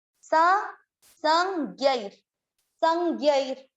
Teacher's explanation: ज्ञ, ज्ञ पे है आई की मात्रा और ये आधार। इसका उच्चारण होगा आधा न, नासिका से, अनुनासिक।